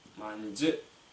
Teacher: После сонорной носовой М звонкая дж.